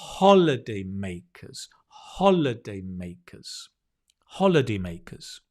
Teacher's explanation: Notice the stress is on the first syllable